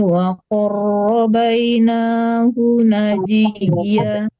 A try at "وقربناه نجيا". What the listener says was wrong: وقرب bukan waqarrabai waqarrabna